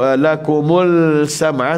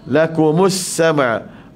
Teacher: Pastikan sambungan dia lam syamsiyah, tak bunyi hidup alif lam sini ya, sebab dia lam syamsiyah.